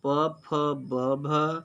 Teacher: प फ ब भ ओष्ठ ध्वनियाँ होती हैं